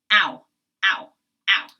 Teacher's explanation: they're acting as a diphthong, and it's one sound, but it's a moving sound